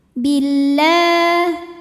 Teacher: huruf lam berbaris fathah panjang, maka dibaca panjang lamnya 2 harokat. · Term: matobi'i muqaddar